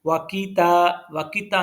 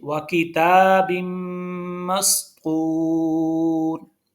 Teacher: तो इसमें व किताबिम के ता के ऊपर खड़ी ज़बर है और खड़ी ज़बर को एक अलिफ के बराबर खींच के पढ़ा जाता है। वाकिता नहीं पढ़ेंगे।